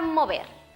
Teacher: el fonema M es bilabial, nasal y sonoro